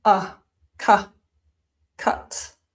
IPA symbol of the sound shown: ʌ